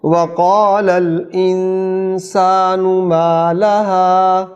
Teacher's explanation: قال میں قاف حلق سے آئے گا، انسانو یہاں اخفا ہوگا غنہ کے ساتھ.